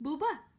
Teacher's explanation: She's very little baby, but she can do constricted voice